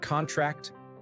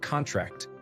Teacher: The former, with stress on the first syllable, is a noun, as in sign this contract, whereas the latter, with stress on the last syllable, is a verb, as in the muscles contract.